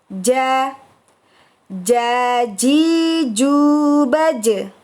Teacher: Untuk jim sukun kita ucapkan dengan memantulkan suara.